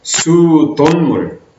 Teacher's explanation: 니은이 첨가되는 사이소리 현상이 발생했습니다. 그럼 수도라는 그 앞말의 마지막 받침이 없죠.